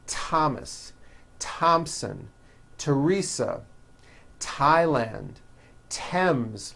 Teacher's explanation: Although these next words and names are spelled with a TH, they are pronounced as if they were spelled with a normal T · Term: TH exceptions